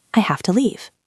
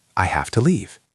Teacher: Notice have and leave are strong. To is weak.